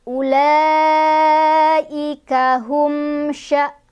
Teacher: Ulaika itu satu kalimah ya. Jadi cara bacanya panjang, boleh 4, boleh 5. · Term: mad wajib muttasil